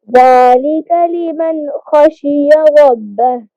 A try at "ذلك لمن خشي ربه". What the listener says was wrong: लिमन पे गुन्ना नहीं करेंगे, आगे हरूफ हल्की आ गया है। ذلك लिमन खशिय रब्बह। रब्बह।